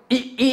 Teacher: यानी जब हम बोले तो जीभ हमारी कम उठे, जैसे हम ई ई आपने बोला, जब ई ई बोलते हैं तो जीभ कुछ ज्यादा उठती है